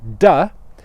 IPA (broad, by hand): d